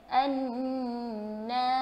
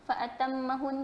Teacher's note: Jadi diwajibkan dengung tu sebab kita tengok nun tu ada berasal daripada dua nun.